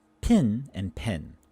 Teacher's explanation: these two vowels in certain words are joining together they're becoming indistinguishable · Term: merging of vowels